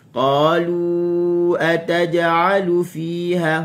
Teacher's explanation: Dalam 2 kalimah kita baca dengan mad jaiz 4 harakat.